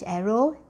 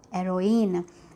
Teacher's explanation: the masculine version of the word begins with H aspirated, whereas the feminine version does not begin with the H aspirated. In fact, it begins with H mute.